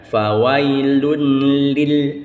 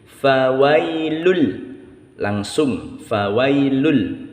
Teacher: ini langsung masuk ke dalam bunyi lam berharakat tasydid ini namanya hukum tajwid idgham bila Runa masuk ke dalam huruf